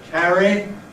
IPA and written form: ˈkæri (carry)